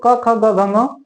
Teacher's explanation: क ख ग घ ङ कंठ से बोला जाता है